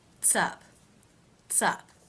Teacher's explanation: I'm sure you're noticing that I'm putting the TS sound, the final consonant sounds of the first word, and I'm attaching it to the second word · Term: linking